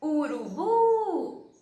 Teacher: então a sílaba tônica é a última